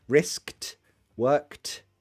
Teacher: worked is pronounced with a t because it's unvoiced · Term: unvoiced sounds